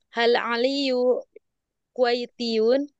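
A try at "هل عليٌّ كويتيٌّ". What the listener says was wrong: Aliyun tanwin.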